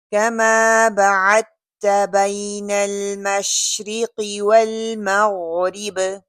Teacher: वही ना मजहूल इसको करके नहीं पढ़ना। अल मशरिक़ी काफ तफ़ख़ीम निस्बी है और मोटा पढ़ा जाएगा। वल मग़रिब गैन जो है ये भी मोटा पढ़ा जाएगा, और बाकी ऊपर हम कलकला करेंगे।